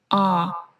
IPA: ɔ: